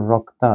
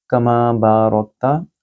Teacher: را کو بھی موٹا پڑھیں گے کیونکہ یہ را کے اوپر زبر ہے، تفخیم کا قاعدہ۔